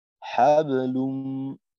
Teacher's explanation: এখানে হাবলুম মনে হইলো যে কলকলার মুহূর্তে ঠোঁটটা গোল হয়ে বের হয়েছে আওয়াজটা। এখানে ঠোঁটটাকে আর একটু ছড়ানো রেখে হাবলুম, যেন হাবু একটু ওকার মুখী না হয়।